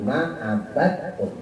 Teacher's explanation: dalnya itu nggak dikol-kolangin, nggak dipantulin karena bertemu tak. Jadi itu mutajanis.